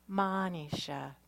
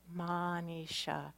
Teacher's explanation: That first A is drawn out just a little bit. Manisha. And even though it's spelled I-S-H, it's pronounced E-S-H.